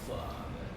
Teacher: We Indians do that because it is a labial pronunciation. When it becomes father, it is semi-labial. It is dental and labial.